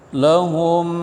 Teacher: hum enggak ada dengung hum izhar syafawi